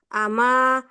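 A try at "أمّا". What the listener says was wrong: Amma ya, pakai tasdid, Bu ya.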